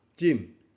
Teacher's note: 所以读浸，也就是象声，也就是高降调